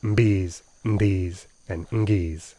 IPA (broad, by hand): mbs, nds, ŋgs